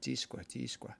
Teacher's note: that long E in Northern Y dialect will sound a little bit more like a long I